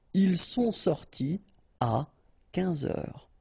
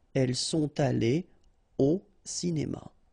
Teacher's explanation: You don't make a liaison after your participe passé. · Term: no liaison